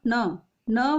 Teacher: जो न वर्ण है नासिक्य वर्ण भी है और मूर्धन्य भी है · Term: नासिक्य और मूर्धन्य